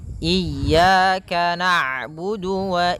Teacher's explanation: ketika huruf Ain berharakat sukun Ain itu punya punya sifat namanya bainah